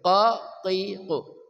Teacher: qaf ya dari pangkal lidah